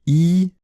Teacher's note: c'est une voyelle antérieure, je ne peux pas prononcer de voyelle encore plus en avant.